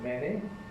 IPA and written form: ˈmeni (many)